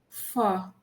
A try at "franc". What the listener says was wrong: R को कैसे छोड़ सकते हैं? Franc, France, la, France. If I say France, ro. So it's ons, nasal.